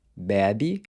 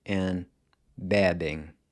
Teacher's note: it changes to an open E in the next two forms